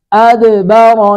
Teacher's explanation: پڑھیں گے، ہاں پر سٹی کی آواز نہیں آئے گی، أَدْبَرَ، دال ساکن پہ قلقلہ ہو رہا ہے